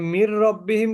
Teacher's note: নুন সাকিনের পরে র আসলে গুণনা ছাড়া মিলিয়ে পড়তে হয়।